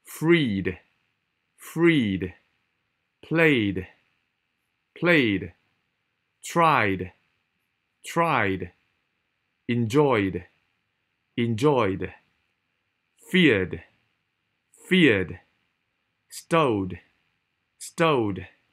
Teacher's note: 其實母音啊一定震喉嚨噶嘛，咪對翻一個震喉嚨個D咯